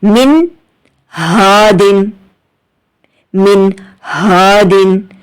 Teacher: حرف ہلکی ہے، تو ہمیں کیا کرنا ہے؟ اظہار کرنا ہے، ظاہر کرنا ہے اور غنہ نہیں کرنا